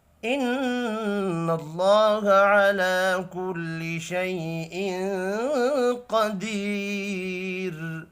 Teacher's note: نون مشدد پر غنہ کریں گے، اللہ کا نام پر پڑھا جائے گا۔